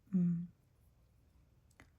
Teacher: If you have an M written like that, it's most likely just going to be pronounced M. It's a nasal because we're closing our oral passageway, our mouth, and letting the air escape through our nose.